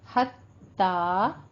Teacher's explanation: ता के ऊपर खड़ी जबर है, मुंह को खोलना है, आवाज को 2 काउंट करना है, यानी 2 हरकतों बराबर लंबा पढ़ना है।